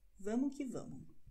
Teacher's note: in informeller brasilianisch würden wir VAMO QUE VAMO aussprechen. Dieses S wäre nicht zu hören